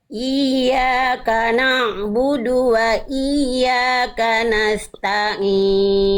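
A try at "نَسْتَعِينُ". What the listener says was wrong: Tinggal Bunda ain-ainnya aja nih. Na masih hidung. Nastain masih masuk hidung.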